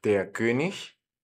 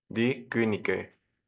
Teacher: la IG al final suena como ich, como en la palabra yo, pero cuando le agregamos esta E del plural, la G se vuelve a convertir en una G.